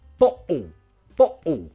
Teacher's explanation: With Cockney, you can do glottal T and L